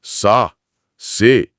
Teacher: ચ કે છ નો ઉચ્ચાર ઘણીવાર સ જેવો થાય છે એટલે ચા ને બદલે સા છે ને બદલે સે સા સે